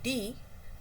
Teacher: So, it's voiced alveolar plosive. Again, it's alveolar plosive because D in D we touch the tongue it touches the starting of the teeth teeth ridge.